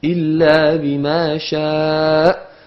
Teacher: vous remarquez que al-hamza sort effectivement du fond de la gorge